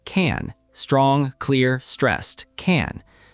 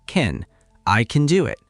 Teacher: The vowel reduces to awah. The word becomes shorter, quieter, less important >> because in that sentence the important words are do and it. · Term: weak form